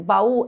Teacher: baú é uma palavra oxítona, ou seja, tem a última sílaba mais forte